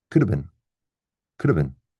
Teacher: So we often remove the V of, right? And we end up with could have been, could have been.